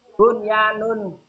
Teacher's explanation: ada nun sukun ketemu huruf ya dalam satu kata dibaca jelas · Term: idhar wajib